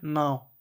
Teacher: ऐसन उच्चारण जे नाक और मुंह से होवेला और छोट रहेला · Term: अनुनासिक